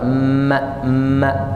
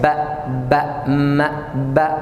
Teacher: Bibir juga ba, ba, ma, ba. Dua-duanya keluar dari bibir dan dua-duanya kasrah.